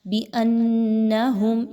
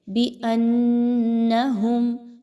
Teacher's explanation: بِأَنَّهُمْ، یہاں پہ دیکھیں تو حمزہ اور نون کو آپس میں ملاتے ہوئے نون مشدد کا غنہ کیجئے، آواز کو ناک میں لے کر جائیے اچھے طریقے سے اور ایک الف کے برابر رکیے